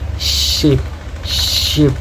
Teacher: produced by raising the front part of the tongue toward the hard palate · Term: palatal fricatives